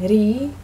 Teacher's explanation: re which is an R sound although a lot of people think it's a D sound but it's actually an R sound